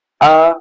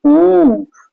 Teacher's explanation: ओठ वृत्तमुखी या गोलाकार नहीं होते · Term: आवृत्तमुखी